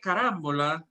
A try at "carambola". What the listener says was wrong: No. Oh, you put the emphasis in the wrong place. Carambola. Carambola.